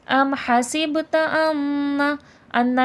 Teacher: ام حسبت ان میں نون مشدد کا غنہ ہے